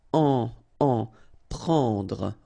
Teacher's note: combination of E and N, it's what we call nasal, so it goes in your nose and it's en, prendre, okay, don't insist on the final E.